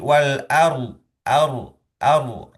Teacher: Rok sukun itu ternyata didahului oleh fathah di huruf sebelumnya ya, yaitu huruf alif gitu kan ya, atau huruf hamzah dan ya. Nah, maka rok sukun itu yang tersukun tersebut eh hukumnya menjadi tebal gitu ya, karena pengaruh dari harokat sebelumnya yaitu fathah · Meskipun fathahnya ada di alif, yang itu pengucapannya tipis, tetapi huruf ro sukunnya itu tebal